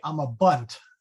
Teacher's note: We would probably stress the last syllable